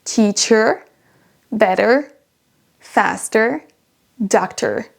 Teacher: c'est un R un petit peu roulé à la fin